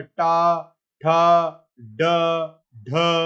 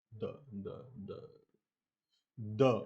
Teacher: तो ये ध्वनियां जो है मूर्धन्य ध्वनियां मानी गई है